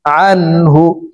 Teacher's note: আইন নুন জবর আন, নুন সেকেন্ডের পরে ইজহারের 6 হরফের একটি হরফ হা আসছে, এই কারণে এই নুন সেকেন্ডকে গুন্নাহ ছাড়া স্পষ্ট করিয়া পড়ব, এখানে গুন্নাহ করা যাবে না।